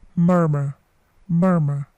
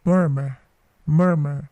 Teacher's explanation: huruf r atau R yang terakhir itu tidak dibaca